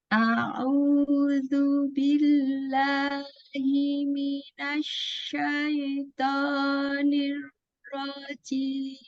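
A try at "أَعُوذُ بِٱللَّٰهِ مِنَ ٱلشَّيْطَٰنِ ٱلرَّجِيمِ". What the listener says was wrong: Ya, jangan ditahan suaranya, dilepasin. Jangan ditekan, lepasin.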